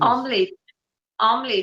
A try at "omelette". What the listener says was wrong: It's you don't emphasize e. Just say omelette.